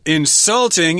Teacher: insulting is how you pronounce this with the accent on the second syllable